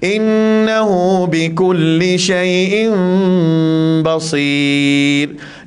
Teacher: Dengung dia 2 harakat, sambung dengan ba. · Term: Iqlab